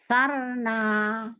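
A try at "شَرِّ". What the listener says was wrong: Kenapa jadi ain lagi depannya? A dulu.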